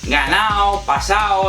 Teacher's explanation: la frecuente omisión de la D o la G cuando están en posición intervocálica, es decir, entre dos vocales